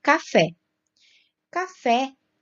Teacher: café tem a sílaba tônica lá na última sílaba no fé palavras que tem a última sílaba tônica são oxítonas